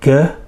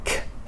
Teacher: However, its unvoiced brother or sister is the sound k. So g, vibrating, k, no vibration.